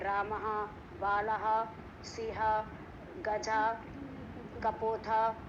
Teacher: विसर्ग का उच्चारण जो है वो हा होता है और बोलते वक्त हा के स्थान पे हम विसर्ग लगाते हैं।